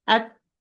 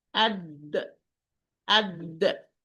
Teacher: both, when I pronounce them, the articulation point is completely closed. I say ad, it's closed, and I say ad, closed.